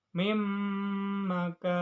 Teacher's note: Terdapat hukum bacaan idgham bigunah sebab nun sukun bertemu mim. Cara bacanya masuk dengan dengung ditahan selama 3 harokat.